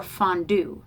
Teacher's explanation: souffle where it's unstressed and then stressed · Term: iamb